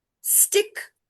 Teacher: Stick, we're telling it at one go, but you can hear st separately. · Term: initial consonant blending